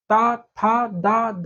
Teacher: इनका उच्चारण करते समय दांतों द्वारा जिह्वा के अगले भाग को स्पर्श करते हैं। इसलिए हम इन्हें दंत वर्ण कहते हैं।